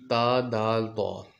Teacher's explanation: زبان کی نوک جب سامنے والے دانتوں کی جڑوں میں لگے، جو سامنے دانت ہیں نا ہمارے، ان کی جڑوں میں لگے تو یہ حرف ادا ہوتے ہیں۔